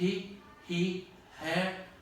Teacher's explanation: This is sounds, consonants that I make in the glottal, in the glottis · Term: aspiration